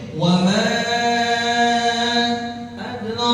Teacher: Dal sukun, dal sakinah. Maka ada hukum apa di situ? Hukum qalqalah